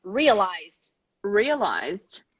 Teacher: vibrations go straight to d ignore the e